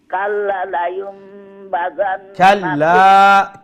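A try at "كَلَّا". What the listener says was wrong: কাল্লা এখানে লম্বা করবা,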